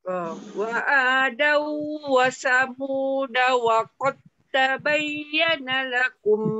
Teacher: Wa qad dal tak bunyi. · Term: idgham mutajani sain